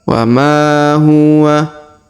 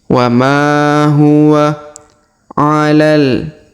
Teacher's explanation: Huruf ma dipanjangkan 2 harokat karena di depannya terdapat alif.